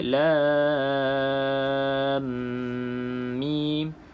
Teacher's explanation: Jadi bila kita sebut lam ini, masukkan ke dalam mim dengan dengung 2 harakat. Jadi kita akan baca lam mim.